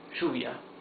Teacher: Lluvia, j, that's double L. In some countries in Latin America, it's pronounced sh.